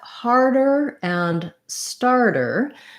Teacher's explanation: starter this t is going to be a flap t and we tend to flap both d's and t's in the middle of words when they're between two vowels · these two words really actually have the same sounds except for the initial h and st sounds · So the DER and the TER both sound more like a DER. That's because in a word like starter, this T is going to be a flap T.